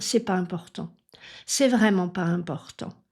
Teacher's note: Souvent on fait disparaître le petit n de négation et on peut entendre dire c'est pas important, c'est vraiment pas important. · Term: la forme orale